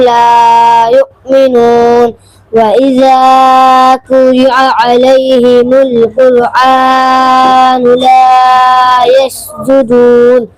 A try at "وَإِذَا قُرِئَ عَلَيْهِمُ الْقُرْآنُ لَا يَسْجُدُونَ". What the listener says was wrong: थोड़ा ज्यादा खींच दे रहे हो, थोड़ा कम कम खींचो।